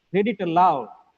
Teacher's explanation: Aloud is the content word. It has two syllables. The second syllable is stressed. As per the rule, the first is weak, loud. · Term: stressed syllable